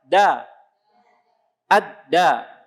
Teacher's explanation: Aliran nafasnya tertahan, tidak keluar begitu banyak seperti hamas. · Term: Huruf jahar